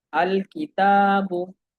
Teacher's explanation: काफ हरूफ कमरिया में से, क्योंकि काफ से पहले जो लाम तारीफ है उसको पढ़ा जा रहा है।